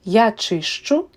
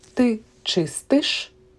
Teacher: Here we also have palatalization, but only in first person singular. So, ст changes to щ.